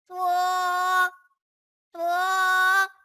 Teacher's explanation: تو، تو حروف مستعلیہ میں سے ہے، اسے بھی پر یعنی موٹا پڑھیں گے، یہ زبان کی نوک اور اوپر کے دانتوں کی جڑ سے ادا ہوتا ہے